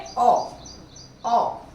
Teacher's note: इसका उच्चारण देखिए, ओ ओ आ और ओ के बीच की ध्वनि है ये। आ में मुंह पूरा खुला, आ, ओ में ओ ऊपर हो गया, आ, यानी आ ओ आ, इनके बीच का उच्चारण है ये। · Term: आगत स्वर